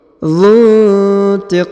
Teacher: Contohnya wallahu azizun dzuntiqam. Dzu ya didengungkan ya, huruf dzu bertemu dengan huruf nun sukun. Dzuntiqam. Kemudian huruf qa dipanjangkan boleh 2, boleh 4, boleh 6 ya.